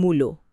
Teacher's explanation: যেমন ধরুন, মূলা শব্দটা আমরা বলি মূলো, এখানে আগের উয়ের প্রভাবে পরের আ ধ্বনিটা ও হয়ে গেল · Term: প্রগত স্বরসঙ্গতি